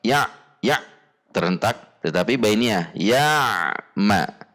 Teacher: Ain punya sifat bainiyah sehingga ada sedikit aliran, jadi tidak langsung terhentak.